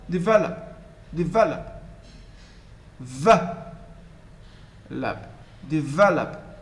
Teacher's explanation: the first and last syllable are almost inaudible